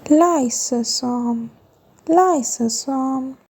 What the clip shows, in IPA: ˈlaɪ.sə.soʊm